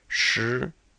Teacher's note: in Pinyin the SH is with the tongue curled